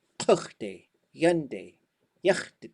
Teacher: when they go to future, they go yande and kuchte, and then they jump to a high tone beginning.